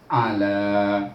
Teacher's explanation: bunyinya jangan panjangkan a tu, la yang panjang